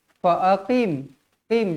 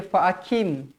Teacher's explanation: Qaf walaupun dibariskan bawah tetapi mestilah tebal. Fa'aqim. Qim, jangan baca fa'akim.